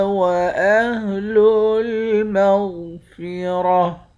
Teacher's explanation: هو أهل التقوى وأهل المغفرة، قاف کو موٹا بھی پڑھیں گے، قاف پر قلقلہ بھی کریں گے، واو کے اوپر کھڑا زبر ہے، کھڑے زبر کو ایک الف کی مقدار کھینچ کر پڑھتے ہیں۔ غائن کو موٹا پڑھیں گے، را کو بھی موٹا پڑھیں گے، آخر میں گولتا ہے، گولتا پر جب وقف کرتے ہیں تو گولتا ہا بن جاتی ہے.